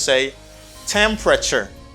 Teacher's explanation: The stress is in the first syllable. You just say temperature.